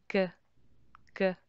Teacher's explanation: a little bit of vibration in your vocal cord and a little teeny bit of air goes out.